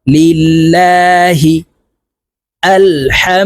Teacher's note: আল্লাহ শব্দের আগের হরফে জের হইলে এই লামকে লা অর্থাৎ পাতলা করিয়া পড়িতে হয়